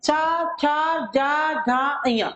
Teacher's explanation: इन पांचों वर्णों में तालु से ही उच्चारित होते हैं ये वर्ण · जीभ हमारे मुख के छत के आगे के भाग में लग रही है, इसलिए यह है तालु से उच्चारित वर्ण। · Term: चा वर्ग